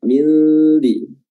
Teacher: makhraj huruf dzal adalah ujung lidah yang diapit oleh kedua gigi atas dan bawah